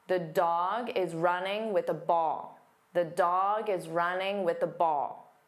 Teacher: The content words are dog, running, ball. These are the words that you'll hear louder and longer.